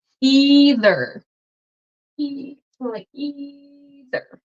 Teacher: You're getting the best view on TikTok because the view here on YouTube is not the best. So the TH, your tongue is between your teeth. And this is a voiced TH, so you're gonna have vibration in your throat.